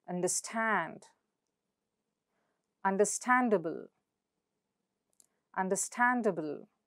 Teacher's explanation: So the syllable stand is stressed.